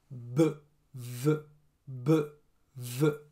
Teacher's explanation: Pour le b et le v, ici, les cordes vocales bougent.